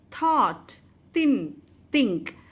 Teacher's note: we can clearly listen that it you don't have the voice so we call it as voiceless fricative